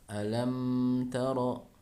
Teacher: Misalnya alam tara, tidak boleh ada dengung, atau istilahnya gunnah tambahan ya, yang membuat bacaan menjadi agak lambat di huruf mim ya, contohnya seperti tadi alam taro, nah itu tidak boleh ya, jadi langsung jelas suara mimnya, sempurna suara mimnya tanpa gunnah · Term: mim sukun